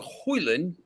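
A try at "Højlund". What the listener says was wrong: you don't pronounce the d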